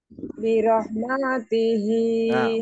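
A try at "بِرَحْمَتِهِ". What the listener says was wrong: Maknya kepanjangan.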